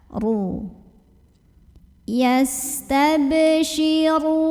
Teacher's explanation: Maka cara membunyikannya, ra-nya ini dibaca dengan menebalkannya. Pangkal lidah kita dinaikkan sehingga bunyi yang terdengar lebih penuh mengisi rongga mulut kita. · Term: tafkhim